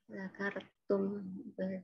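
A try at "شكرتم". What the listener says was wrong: Bukan zakar ya, tapi syakar.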